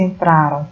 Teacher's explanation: Ela é uma palavra paroxítona, né? Porque a sílaba tônica ela é identificada aqui nessa penúltima sílaba.